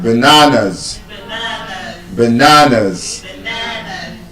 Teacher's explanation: There's a schwa sound in the first A and the last A.